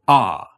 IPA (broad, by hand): ɑ